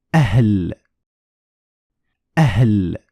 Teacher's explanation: But what happens if the hamza is followed by ha? What's going to happen is a small explosion of air